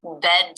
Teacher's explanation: jaw drops to make the uh as in bed vowel sound and the tip of the tongue up to make the D